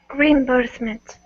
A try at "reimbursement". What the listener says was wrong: I wouldn't separate reim. I'd put them together. Reimbursement.